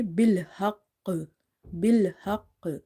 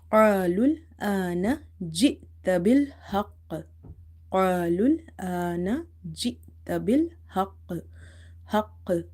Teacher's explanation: So there is a bounce in this letter when you say bil haqq. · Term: strongest qalqala